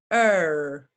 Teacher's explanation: your tongue when you say er is moving from the bottom of your mouth to the top er if you can feel your tongue going from your bottom